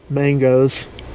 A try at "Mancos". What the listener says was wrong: It's not Mangoes. You would be thinking Mancos. No, not Mangoes, because there's no G. thinking Mancos. Mancos, but it's pronounced Mancos, according to Diane at Albuquerque North KOA.